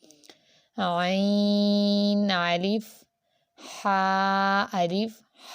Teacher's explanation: حا حروف حلقی میں سے ہے، عین بھی، تو دونوں کو آپ نے حلق سے ادا کرنا ہے